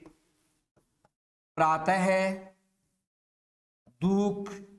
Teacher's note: विसर्ग का जब उच्चारण करेंगे तो ध्वनि अह की आएगी